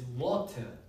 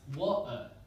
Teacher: So this alveolar stop is wa-ta. But this glottal stop is pronounced wa-a.